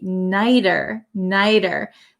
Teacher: this T becomes a flap T